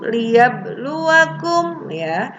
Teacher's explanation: Liyabluwakum, ada huruf qalqalah nih, mati ba di tengah kalimat, qalqalah sugro. Mantulnya jangan terlalu tebal, jangan terlalu kuat, tapi kecil saja karena qalqalah sugro.